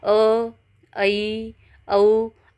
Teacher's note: अर्ध विवृत में मुख आधा खुल रहा है